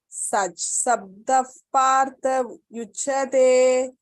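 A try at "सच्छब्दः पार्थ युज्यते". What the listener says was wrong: This is Sachabda. Sachabda. No, not no, you don't Sabda, don't say. Sachabda. Sachabda. No, don't be Shabda. Sachabda. Don't Icha. Sachabda.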